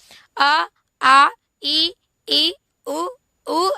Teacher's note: स्वरों का जो अभ्यांतर प्रयत्न होगा क्या होगा विवृत विवृत मतलब खुला हुआ